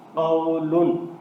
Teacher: اب اس قاف کے اوپر زبر ہے، اس کے بعد واو کے اوپر جزم ہے تو یہ واو لین ہے، اس کو نرمی سے پڑھنا ہے، اس کو لمبا نہیں ہونے دینا، اور یہ قاف حروف مستعلیہ ہے، اس کو پر پڑھنا ہے۔